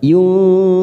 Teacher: nun sukun bertemu zain ikhfa hakiki, 3 ketuk kita samarkan bunyi nun sukun. Yunzifun, fun mat arid sukun 4 harokat kita panjangkan.